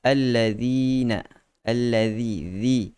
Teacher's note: keluarkan lidah pada hujung lidah itu kita sentuh pada gigi kacip bahagian hadapan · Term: zal